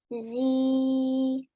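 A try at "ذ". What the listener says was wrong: Now remember, this is dhal, dhal. So the top, your front teeth at the top should touch the tip of your tongue. So you don't make a buzzing sound, you make a the sound. Dhal.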